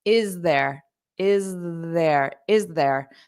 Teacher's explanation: you might have a little bit of a z voice sound to combine these two together